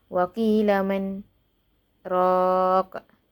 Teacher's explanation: saya berhenti pada man dan tanpa mengambil nafas baharu saya menyambung raq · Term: saktah